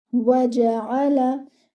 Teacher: The jim should be given one count without any air.